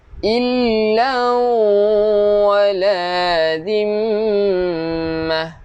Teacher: Ta marbutah berhenti bunyi ha.